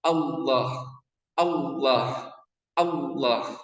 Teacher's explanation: huruf lam ini dibaca tebal